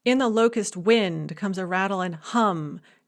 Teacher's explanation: it does have this very strong rhythm with a tendency to have a strong stress on the third and the last syllables